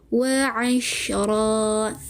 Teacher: dengan dihilangkan bunyi tanwin, digantikan dengan kita panjangkan ra-nya 2 harakat